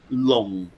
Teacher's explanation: it's kind of a low falling tone